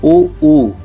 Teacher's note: इसमें ओठ ही घूम रहे हैं हवा निकल गई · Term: ओष्ठ